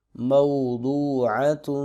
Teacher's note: تا دو پشتون یہاں پر اخفا ہو رہا ہے، ناک میں آواز کو لے کے جائیں گے